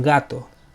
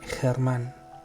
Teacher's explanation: la g española tiene un sonido fuerte y explosivo en gato pero tiene un sonido suave y aspirado en germán